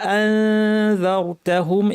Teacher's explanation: দালের মাখরাজে জিব্বা নিয়ে নাক থেকে গুন্না করতে হবে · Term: ইখফা